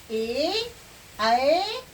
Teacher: ए ऐ का उच्चारण स्थान क्या होगा? कंठ और तालु होगा।